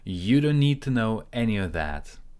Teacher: we cancel the T, we link don't and need. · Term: linking